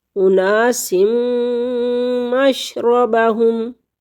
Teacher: نون تنوین کے بعد میم مشدد آ گیا حروف یرملون میں سے تو یہاں پر ادغام کے ساتھ غنہ کریں گے